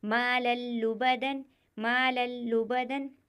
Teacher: یہاں پر تنوین کے بعد حروف ادغام میں سے لام آیا ہوا ہے تو یہاں پر بھی بغیر گننے کے ادا کریں گے۔